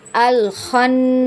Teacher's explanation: huruf nun jika dia ada tanda tasydid maka wajib dibaca gunnah ya. Dibaca gunnah, kemudian di gunnahnya ini ditahan 2 harokat ya. An-nya itu ditahan 2 harokat atau 2 ketukan ya.